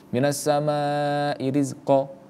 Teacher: Mad iwad anit tanwin ini panjangnya adalah dua harakat sama mencak mad thobi'i.